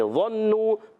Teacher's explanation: ظا حرف مستعلیہ میں سے بھی ہے، حرف مطبقہ میں سے بھی ہے، ایکسٹرا موٹے حروف میں سے بھی ہے · یہاں نون مشدد آگے ایک الف کا غنہ کریں گے، واؤ مدہ ہے ایک الف کھینچیں گے